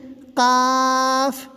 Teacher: حلق سے تو بول رہے ہیں مگر اس کو موٹا نہیں کر رہے ہیں